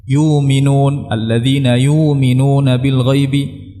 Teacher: Ada yang memudahkannya dengan ibdal, yaitu menggantinya dengan alif. Ya. Yuminun, alladzina yuminuna bil ghaibi, menggantinya dengan alif ketika sebelumnya fathah, atau dengan waw ketika sebelumnya dhammah, atau dengan ya ketika sebelumnya kasrah.